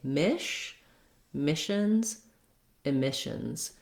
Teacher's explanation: the mish syllable is the one that has the clear vowel and is longer.